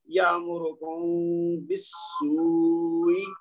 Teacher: جیسے یہ پہلی مثال ہے نا, یہ جو جس کی ہم بات کر رہے ہیں, تو یہ میں اگر میں پڑھوں تو یہ پڑھوں گا یامرکم بالسوء, یعنی میم کی آواز کو میں نے چھپایا ہے, لیکن آواز تو آئے گی سننے والے کو, ظاہر نہیں ہوگی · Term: اخفاء